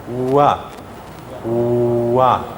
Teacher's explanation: There's a lot of air coming out, but it's not a vowel, it's still a consonant. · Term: approximants